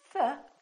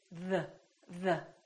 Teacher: What is the tongue doing exactly? Well, the tip of the tongue is touching your upper teeth. And there's an airflow coming out while the tongue is touching the upper teeth.